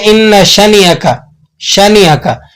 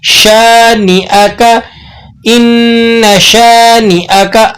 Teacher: شین کے بعد الف لگا ہوا ہے، یہ الف مدہ ہے، تو آپ نے اس کو ایک الف تک کھینچ کر پڑھنا ہے